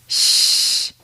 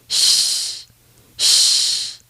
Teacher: The only real difference is that your tongue never actually touches the roof of your mouth to make that short explosion of air. This sounds more like air escaping than air exploding. If you're doing it properly, it should sound like sh, like a light SH sound in English.